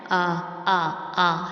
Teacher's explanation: حمزہ سینے کی جانب والے حلق کے حصے سے ادا ہوتا ہے